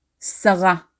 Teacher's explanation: we formally stress the last syllable in the name Sarah